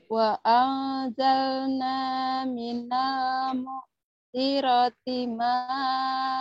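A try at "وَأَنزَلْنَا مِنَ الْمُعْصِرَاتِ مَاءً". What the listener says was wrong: Emang sinya pendek?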